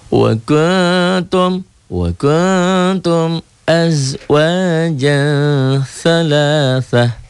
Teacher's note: ta marbutoh jika dihentikan bunyinya menjadi ha